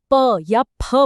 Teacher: हमारे होठ ही एक दूसरे को छूते हैं। तो यहां पे होठ खुद ही स्थानम भी है और कर्णम भी।